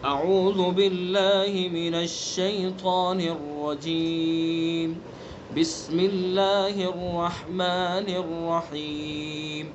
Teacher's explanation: مدوں کا بھی خیال رکھنا ہے، یعنی جتنا رجیم کو کھینچیں گے اتنا ہی رحیم کو کھینچیں گے